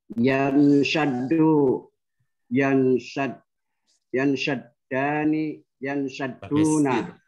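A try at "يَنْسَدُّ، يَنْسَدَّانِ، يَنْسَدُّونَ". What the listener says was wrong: Pakai sin bukan pakai shin ya. Yansaddu, yansaddani, yansadduna, bukan yansaddu.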